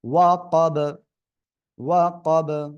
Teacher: বা সাকিন হবে, কলকলা হবে